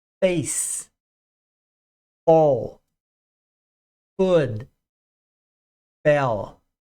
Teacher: é lábio dental, arcada superior em cima do lábio inferior. O F ou PH não é vozeado